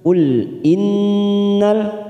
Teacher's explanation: nun yang bertasdid bacaan gunah mustaddadah